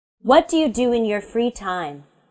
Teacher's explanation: my voice goes down at the end of the question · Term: falling intonation